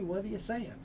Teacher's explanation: the t moves over becomes the soft d